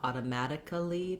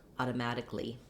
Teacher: When we have one more tip, when we change automatic to automatically, this would look like automatically, like two syllables there, and actually we really reduce it down to just one syllable so that A-L-L-Y on many words doesn't say ali, but rather li